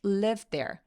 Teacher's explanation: lived 와 there도 거의처럼 발음이 됩니다 그래서 거의 하나의 소리라고 봐서 혀의 위치가 굉장히 가깝고 거의 하나의 위치이기 때문에 그래서 그냥 한 번만 발음하게 됩니다